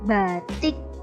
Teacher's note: Tapi bisa diindikasi apabila huruf vokalnya diucapkan ringan, ini, isi, itu adalah vokal terbuka yang tidak diikuti oleh konsonan mati. Tapi vokal tersebut akan diucapkan sedikit lebih tinggi, batik, apabila diikuti dengan konsonan mati